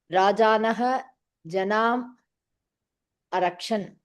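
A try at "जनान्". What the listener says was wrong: Did you say Janam or Janan? The Nakara sound I'm not hearing.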